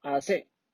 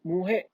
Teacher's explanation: cuando la r se pronuncia al final se realiza como un sonido muy débil o incluso que un sonido desaparece